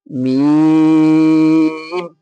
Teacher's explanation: দুই ঠোঁটের ভিজে অংশ হতে উচ্চারিত হয় মিম